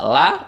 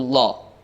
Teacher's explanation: Lafdzul jalalah di sini dibaca tafkhim atau dibaca tebal atau dibaca dengan suara O.